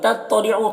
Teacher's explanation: طا کو پر پڑھیں گے، حروف مستعلیہ میں سے